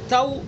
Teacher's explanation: واو کا کیا مخرج ہے، دونوں ہونٹ جب کہ نہ تمام نہ ملے، جب پورے نہ ملے تو. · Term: واولین